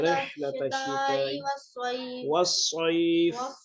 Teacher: ہا کی آواز گلے کے درمیان سے